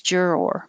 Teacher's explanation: don't have to think about any vowel for the or juror you just round your lips juror but you still keep your tongue in the r position the whole time